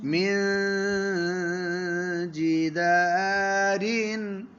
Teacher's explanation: زبان کی نوک تھوڑی لگانی ہے اور تھوڑی نہیں لگانی، اور ناک میں آواز. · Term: اخفا